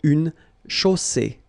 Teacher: you get the double S between two vowels, so it's really strong. I mean, the S is s.